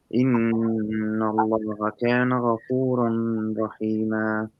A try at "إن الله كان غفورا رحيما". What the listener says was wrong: ما فيش نون خالص. نجربها مرة كمان كده.